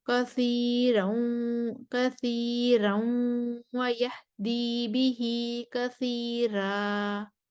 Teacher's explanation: اور پھر کثیر روا پر بھی ورش کے لیے ترقیق الرا ہے